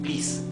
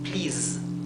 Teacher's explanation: la S en inglés, cuando finaliza, cuando es el último sonido de la palabra, es un sonido vibrado, como el sonido de la Z, como si fuera una abeja que está zumbando, sería zzz.